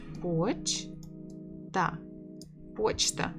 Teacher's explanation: 2 syllables. Stress on the first.